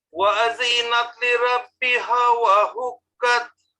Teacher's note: দেখেন ওয়াদিতে কোনো টান নাই হ্যাঁ হরকত এখানে তাড়াতাড়ি পড়তে হবে